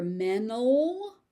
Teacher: So you may also hear mental, where the T is dropped completely. The T is very light.